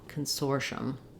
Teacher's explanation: American English it's all right also to say Consortium Consortium but typically we drop that e syllable that e sound and reduce the syllables to make it smoother